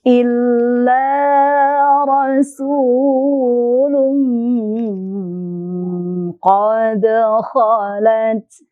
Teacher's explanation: Rasulun ada ikhfa, kita dengungkan di situ.